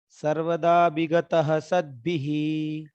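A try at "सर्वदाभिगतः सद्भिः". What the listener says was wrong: भ नहीं हो पा रहा है उच्चारण आप संकोच कर गए। नहीं, सर्वदा विगतः भी।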